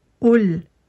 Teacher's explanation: Et quand vous prononcez le qaf, avant de le prononcer, avant de sortir le son de votre gorge, vous placez votre bouche en forme de rond, comme si vous alliez dire ou, et vous allez chercher le son au fond de la gorge. Donc vous préparez votre gorge, normalement elle se resserre et vous sortez votre qaf et vous allez le chercher bien au fond, mais avec le son ou.